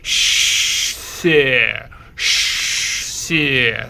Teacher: you are keeping the sh sound while gliding your tongue to the inside of the lower teeth. You will get the xie sound, like sh, xie, xie.